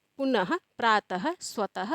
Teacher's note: विसर्ग का उच्चारण ह के समान या ह की तरह होता है